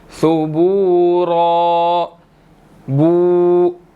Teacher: बा के बाद वाव मद्दा है, 1 सेकंड लंबा करेंगे